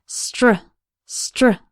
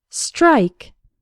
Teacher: STR almost sounds like there's a CH sound in the middle